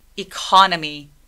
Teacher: 근데 강세는 어디 오냐면 두 번째 음절에 옵니다. 그럼 첫 번째 E라는 소리를 낼 때에는 소리를 좀 작게 해주시는 게 필요해요. 이음절 힘 빼고 이음절에 강세를 줘서 얘기해 보도록 할게요.